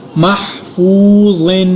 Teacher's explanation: فا کے ساتھ واو مدہ اور غا کو پر ادا کیا اور تنوین پر غنہ کیا